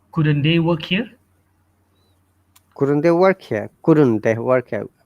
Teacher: Look, it is upper rising tone, which means it's a question.